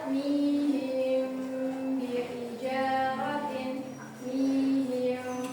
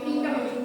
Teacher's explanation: kalau ikhfa syafawi itu bibirnya tidak ditutup rapat, tapi ditahan terus mengeluarkan suara hidung dari pangkal hidung